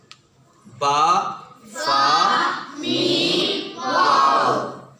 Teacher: ہونٹوں سے صرف 4 حروف ادا ہوتے ہیں: با، فا، میم، واو. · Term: حروف شفوی